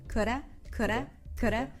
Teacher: Notice that the D is really, really light. It sounds like a flap T, like a ra, like an R in Spanish.